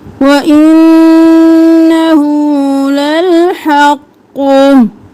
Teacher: हा उल्टा पेश, हु, और नून पर तशदीद है, गुन्ना